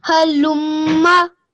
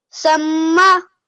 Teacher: When you join the lam and the meme, that ghunna sound, I couldn't hear that very well. So make sure when you join the lam and the meme that I can hear the ghunna sound for at least 2 seconds